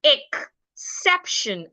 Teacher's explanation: The word is pronounced exception. We're stressing the sep.